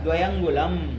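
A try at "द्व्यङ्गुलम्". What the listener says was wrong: दो पूरा क्यों है बोल रहे हो, रिगण जिसे यण कर दिए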